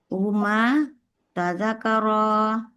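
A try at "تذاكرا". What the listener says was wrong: Tazanya panjang, zanya panjang ya Bu.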